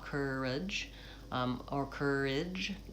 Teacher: the second syllable is unstressed. So I personally say more of a schwa